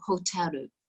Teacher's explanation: the japanese ending is somewhere between the r and the l · they've added that extra vowel at the end because they don't end words on the consonant generally